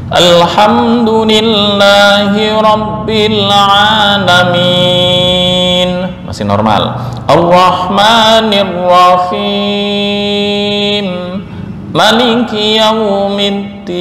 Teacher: Maliki menurut Imam Hamzah dibaca pendek.